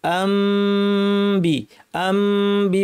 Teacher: আম্বি বলার সময় দুই ঠোঁট লাগবে কিন্তু বেশি চাপ দিব না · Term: ইকলাব